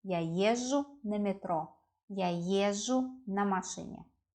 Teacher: When we pronounce езжу, it sounds like езжу. It sounds like long ж